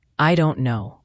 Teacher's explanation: The t in don't is often not pronounced, or it's a very light glottal stop, meaning you stop the air in your throat briefly.